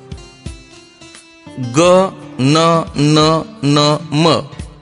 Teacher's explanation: या वर्णांचा उच्चार करताना तोंडाबरोबर थोडासा नाकातून उच्चार होतो, म्हणून या वर्णांना अनुनासिके म्हणतात